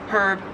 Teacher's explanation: In American English, herb, you just don't pronounce the H at all. And in Australian English, it is herb, you do pronounce the H